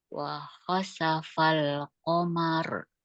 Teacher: ro qamar. ro-nya tahkim, Ya, dibaca tebal. ya, tafhim itu tebal.